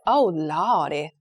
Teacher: say as you just said oh Lord like the r sound when we spell that word on paper it's l o r d y but when she pronounced it it was like l a w d y